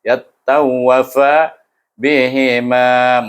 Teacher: Kalau kita berhenti di situ ada bunyi kalkalah, tapi bila kita sambung kalkalah itu hilang.